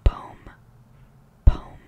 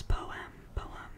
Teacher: I think that's an American thing to say, poem, as if it's one syllable. Some Americans, and I think most of the rest of the world, will say poem.